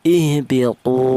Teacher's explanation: di mana wau mati ini didahului huruf yang berharakat dhammah ini dibaca mad thobi'i yaitu panjangnya satu alif atau dua harakat